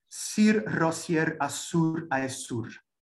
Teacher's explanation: alternating sibilants and trills, and simultaneously setting from the start a resonance between Roger and his emblem. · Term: alliterates